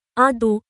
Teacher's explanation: এ হরফটি উচ্চারণে জিহ্বার পার্শ্বভাগকে ডান দিক অথবা বাম দিকের উপরের দাঁতের মাড়ির সাথে লাগিয়ে উচ্চারণ করা যায়, যেমন আ দু, তবে দু উচ্চারণটি সাধারণ দ এর মতো নয়, এটি বেশ মোটা ও গম্ভীর হবে। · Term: দোয়াদ